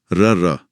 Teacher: आपकी जीभ का अगला हिस्सा कांप कर लुढ़कता है। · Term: लुंठित